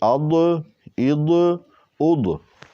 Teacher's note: زبان کی کروٹ جو ہے وہ اوپر مسوڑوں کے ساتھ لیفٹ سائڈ لگے گی، زبان کی کروٹ جو ہے وہ، تو پھر یہ ضاد ادا ہوگا۔